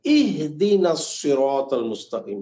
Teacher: حرم، اس کے حرم تو نہیں، عام مساجد کے اماموں کو میں نے دیکھا وہ بھی پڑھتے ہیں اہدینا، حالانکہ بالکل غلط ہے. یہ حمزہ زیر ای ہوتا ہے، اے نہیں ہوتا. اے تو ساؤنڈ ہے ہی نہیں عربی زبان میں، وہ تو فارسی میں ہے، ٹھیک ہے، عربی میں ای ہے.